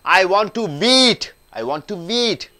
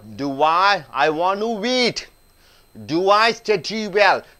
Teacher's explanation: w is getting connected when two vowels are joining together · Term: connect with the w